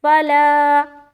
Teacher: لام میں کھینچ رہے، فا کو جلد ادا کرے